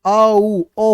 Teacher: आ जो है वो कंठ ध्वनि है। और उ जो है वो ओष्ठ होती है। इसलिए दोनों मिलकर ये ओष्ठ कंठोष् हो जाती है।